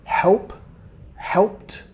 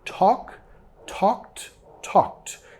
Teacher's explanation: Nota acá la ed, estamos pronunciando como una T.